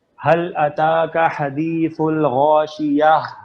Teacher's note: اب اگر آپ پہلی آیت پہ رکیں گے تو یہ تا مربوطہ کو ہا کی ساؤنڈ میں بدل دیں گے